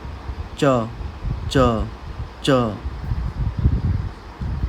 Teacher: कभी कभी ये ज जैसे साउंड करेगा, कभी कभी ये च जैसे साउंड करेगा। इसकी एक्चुअल प्रोनाउंसिएशन इन दोनों के बीच में आती है, च च च। तो इसको हम बोलते हैं चियत।